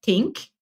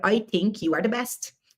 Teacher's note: os irlandeses tem costume de falar TH, essa som como se fosse a língua presa, como se fosse o som de T